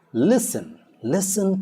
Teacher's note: the t is silent in words like listen